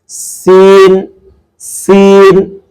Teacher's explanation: এই যা এটা কিন্তু একবারে সুন্দরভাবে জিহ্বার আগা সামনের নিচের দুই দাঁতের প্যাট ও আগার সঙ্গে লাগিয়ে উচ্চারণ করতে হয় যা এভাবে কিন্তু সুন্দরভাবে উচ্চারণ করতে পারবেন সম্মানিত পাঠক তারপর উচ্চারণ হচ্ছে সিন সিনটা একটু শীষ দিয়ে উচ্চারণ করতে হয় জিহ্বার আগা সামনে নিচের দুই দাঁতের পেট ও আগার সঙ্গে লাগিয়ে উচ্চারণ করতে হয়